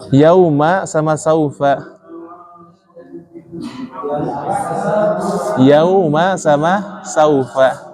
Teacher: Jadi yau jangan yao, saufa jangan sao.